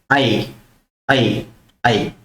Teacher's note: आवाज कंठ से आ रही है और आपकी जीभ जो है तालु को टच कर रही है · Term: कंठ तालव्य